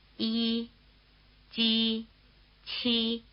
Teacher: palatal consonants. This means that they are pronounced with the tongue in the position for the vowel E